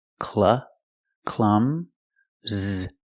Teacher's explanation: the U is short it makes the uh sound like cup and up CL Clum Z the S makes a z sound like zebra